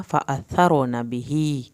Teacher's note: نون کی زبر کو ہرگز لمبا نہیں کرنا